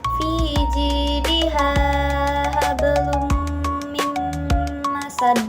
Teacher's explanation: Idgam bigunah cara bacanya dimasukkan sambil mendengung selama satu alif atau dua harakat